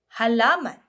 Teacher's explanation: At sa panlalamunan naman, nagmumula sa lalamunan ang tunog.